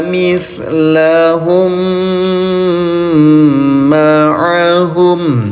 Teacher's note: Mim sukun bertemu dengan mim bertasdid. Ya, dengungkan cara bacanya. Tahan dua harakat. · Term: idgham mimi